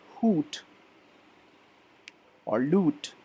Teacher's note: So we make the sound in hoot or lute with our lips really rounded. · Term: long oo sound